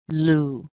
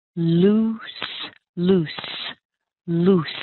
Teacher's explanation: nice ooh sound where you round your lips quite a bit